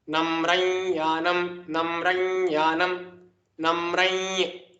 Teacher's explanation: So this anuswara will change to the closest savarna of the para. Here it is ya. So the savarna of ya is nya. Therefore the anuswara will change to nya. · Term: para savarna